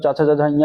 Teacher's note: च वर्ग जो होता है मतलब च छ जया ये ताल ध्वनियां होती है